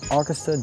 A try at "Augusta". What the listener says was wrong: Yeah, it was like August. It's Augusta. That's the proper way to pronounce it. Augusta.